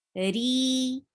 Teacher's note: re will be 2 counts long